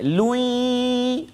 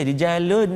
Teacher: Rijalun, masuk lun tu, tanwin tu masuk dalam ya, dengung dua harakat